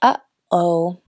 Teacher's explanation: no más se cierra y abre la garganta con una oclusión glotal, representado así, tal como cuando uno dice “uh-oh”. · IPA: /ʔ/